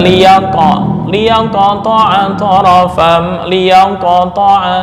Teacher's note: maka cara membaca qalqalah dengan seolah-olah membaca harakat fathah itu lebih dekat